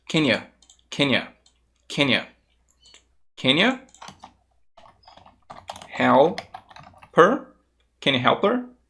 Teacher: O can you, quando você fala mais rápido, ele vai ficar simplesmente um can, e o you, às vezes ele vai se tornar simplesmente um ya.